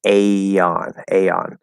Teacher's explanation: when you open into that next vowel we do get a small y between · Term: small y linking rule